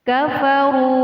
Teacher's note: Kafaru, ru adalah hukum bacaan maqabi'i, ditandai dengan huruf wawu sukun atau wawu mati yang didahului harokat dhammah. Jadi ro-nya dibaca panjang.